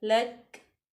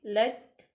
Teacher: काफ के ऊपर जो ज़बर है उसको ख़त्म कर देंगे और काफ की आवाज़ आनी चाहिए और यहाँ पे हमारा मखरज ठहर जाना चाहिए, मखरज में ज़ुबान जो है वो ठहरी रहे, लक ना हो।